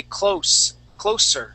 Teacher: you're saying closer using a z sound we want to use an S sound